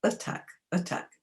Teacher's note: And attack, well, we don't say attack. We swallow the first bit, and it's a schwa.